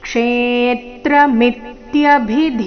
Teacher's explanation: ಕ್ಷೇ ಮೇಲೆ ಆಘಾತ ಮುಂದೆ ಮಿತ್ಯ ಮಿ ಮೇಲೆ ಆಘಾತ